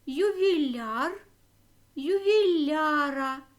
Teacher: ювіляра наголос на закінчення не перейшов наголошено яр Тому це тверда група